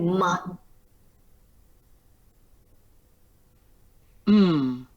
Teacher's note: luồng hơi đi qua đường mũi và môi khép lại